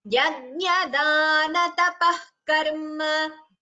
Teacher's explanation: Visarga followed by ka. That is Jishva Muliya.